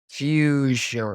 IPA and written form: fjuʒən (fusion)